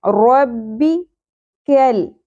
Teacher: کاف باریک پڑا جائے گا اور کاف کی زبر لام کے ساتھ جڑے گی. بیچ میں الف جو آپ کو نظر آ رہا ہے یہ پڑھنے میں نہیں آئے گا لیکن لکھنے میں آئے گا.